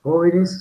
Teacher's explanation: jóvenes sonoriza la s